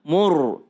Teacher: Ro tebal karena sebelumnya adalah dhamma.